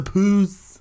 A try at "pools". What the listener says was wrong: You're saying poos now. You're not even saying pool.